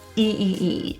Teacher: our tongue is really high to the roof and we're smiling